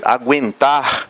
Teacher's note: O U e o E juntos são dois sons vocálicos na mesma sílaba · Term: ditongo